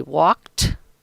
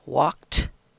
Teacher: I say walked where the sound is a t at the end